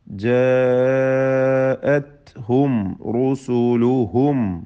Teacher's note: സാക്കിന മീം ഇൽഹാർ ഷഫവി നൽകി മണിക്കാതെ വെളിവാക്കുക.